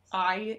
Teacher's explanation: i'm not sure if everybody knows what a diphthong is it's i is a great example it's both a combination of ah and e